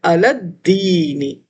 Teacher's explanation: لام جو ہے علا کا یہ الف لام سے نہیں بلکہ ڈائریکٹ دال سے ملے گا